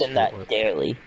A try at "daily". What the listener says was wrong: To me, it just sounds like you're putting an R there.